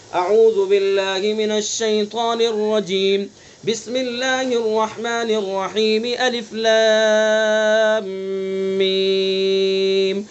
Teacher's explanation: فصل اول وصل ثانی یعنی اعوذ باللہ پر وقف کریں گے اور بسم اللہ کو سورت سے ملائیں گے